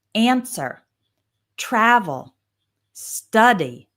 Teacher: These are two syllable verbs with the stress on the first syllable.